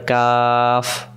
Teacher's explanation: আর কাফ অক্ষরের বেলা জবরে আকার হবে কাফ, মুখটা ফাঁকা হয়ে যাবে, পাতলা উচ্চারণ।